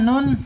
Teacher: Nun secara makhraj ada di lisan, alisan. Alisannya ujung lidah menyentuh langit-langit yang depan di bawah huruf lam ya. Sejajarkan ya lidahnya dengan gigi seri ya.